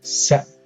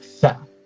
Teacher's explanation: S and th plus minus strident. These features distinguish these pairs of sounds.